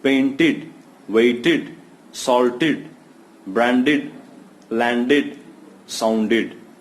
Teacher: after t and d e d is pronounced as id